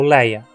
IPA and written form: lɛɪ̯ɐ (vazio)